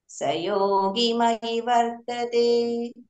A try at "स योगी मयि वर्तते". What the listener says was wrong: సయోగి దీర్ఘం సయోగి మయి వర్తతే